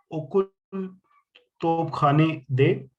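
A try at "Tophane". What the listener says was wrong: खाने नहीं बोलेंगे, हाने, तोपहाने दे।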